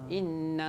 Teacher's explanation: Maknanya nun dengan mim kena ada dengung.